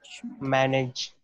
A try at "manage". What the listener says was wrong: Manage. And it's not nedge, it's nij. Manage.